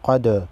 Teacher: قد دال حروف قلقلہ میں سے ہے، دال کو ہلا کر پڑھیں گے